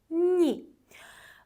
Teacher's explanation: incə ə səsini verir yama burda heç bir qayda yoxdur i həmişə hələ öz səsini i səsini verir sadəcə olaraq i incə sait olduğu üçün önündə gələn samiti incələşdirir